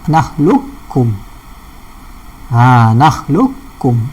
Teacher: Alam nakhluqukum, qaf tak bunyi, tebal tak ada lah. Qaf tak bunyi, tebal pun tak ada. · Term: idgham kamil